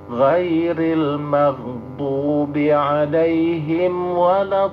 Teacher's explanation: lam bertasdid itu pada hakikatnya adalah dua, maka ditekan, jangan didengungkan